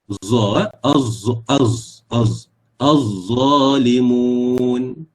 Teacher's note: Dia keluar sedikit nafas, tetapi pada masa sama dia berlaku getaran, ya, pada bahagian peti suara. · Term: huruf za